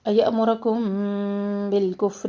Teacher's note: میم ساکن کے بعد با، اخفاء شفوی یہاں کر رہے ہیں، بالکفر، فا میں ہمس جاری رہے، بالکفر،